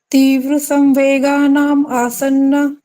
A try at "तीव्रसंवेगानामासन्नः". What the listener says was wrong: हाँ, अब इसको आप नाम आसन्न बोला आपने, इसको इकट्ठा बोलिए। तीव्र संवेगानामासन्न है।